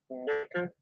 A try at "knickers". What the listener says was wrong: It sounds like you say Snickers. The word tossing also basically Americans just can't say right either, which is quite funny.